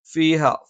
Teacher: ഫ മേലെ മുൻപല്ലിന്റെ താഴ്ഭാഗം താഴെ ചുണ്ടിന്റെ പള്ളയിലാണ്